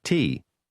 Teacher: is pronounced with a low falling tone